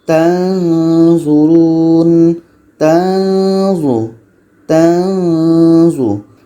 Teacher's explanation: Ketika sebut huruf nun kita sudah merasakan huruf za. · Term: Nun mati za